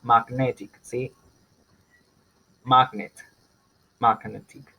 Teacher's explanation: Entonces yo le agrego la IC, va a cambiar el estrés, pero a otra sílaba de la base.